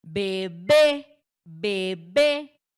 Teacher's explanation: Su sílaba tónica recae al final, en la última. Y además que su terminación es en vocal E, lleva tilde, así que su acentuación es ortográfica, ¿sí?